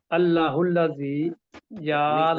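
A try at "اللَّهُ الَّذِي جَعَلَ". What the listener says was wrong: اللہ الذی، لمبا کریں تھوڑا سا،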